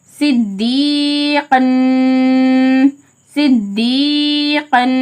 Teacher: இங்கே நூன் இடம் பெற்றிருக்கிறதால இதுக்கு மால் குன்னா எந்த சேஞ்சஸும் இல்லாமல் ஒரு அலிஃப்க்கு நிகராக மூக்கில் நிறுத்தி ஓதணும்